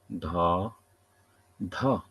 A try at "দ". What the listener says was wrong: না না, প্রথমটা দ, পরেরটা ধ।